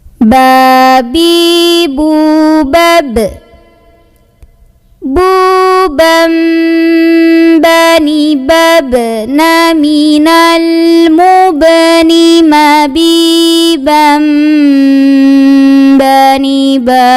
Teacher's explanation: Ba yang sukun kita bunyikan dengan pantulan, qalqalah namanya.